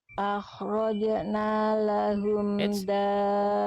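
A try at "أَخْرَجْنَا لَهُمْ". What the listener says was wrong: Bunda jim sukunnya jangan akhrajna, jangan di stop kayak tadi dal sukun. Nah, dibiarkan dilempar aja pantulannya. Akhrajna lahum, jangan akhrajna.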